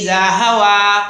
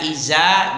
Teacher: Kalau dibaca wan najmi idza hawa, dibaca iza berarti tidak pas dengan sifatnya. Sifat zal itu dia tipis dan halus di ujung lidah aja. Tidak boleh dibaca agak kasar, tidak boleh dia dikuatkan.